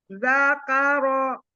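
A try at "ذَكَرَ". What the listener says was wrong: Jangan pakai hamzah. Zakaro. Karena gini, makhrajnya. Nah, jadi makhrajnya hamzah itu kan ada di pita suara.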